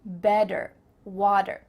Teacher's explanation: In American English, a T that's between two vowel sounds, it doesn't always have to be a vowel, but between two vowel sounds is going to change to a D.